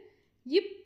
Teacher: கீழ் இதழும் மேல்வாய் பல்லும் இணைவதால் பிறக்கும் எழுத்து